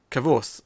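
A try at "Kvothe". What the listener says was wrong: Yeah, Kvoth. Kvoth. There's not much of a gap between the K and the V. It's like Kvoth.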